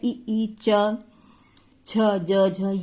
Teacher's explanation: ये सारे जो है तालु से बोले जाते हैं, इनको तालव्य कहते हैं।